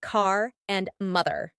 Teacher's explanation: It's a rhotic sound, meaning you'll pronounce the R even at the end of words like car and mother. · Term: American R